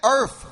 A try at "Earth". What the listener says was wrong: Because instead of the TH sound, you're making the F sound. It's Earth.